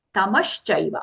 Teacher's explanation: It is not tamaschaiva, not the dental sa, palatal sha.